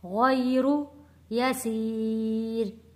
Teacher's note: یا ساکن سے پہلے زبر ہے، حروف لین ہے، جلدی اور نرمی کے ساتھ ادا کریں گے